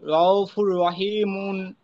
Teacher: তানভীনের আওয়াজকে র সাথে মিলিয়ে বিনা গুন্নায় পড়তে হয় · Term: ইদগামে তাম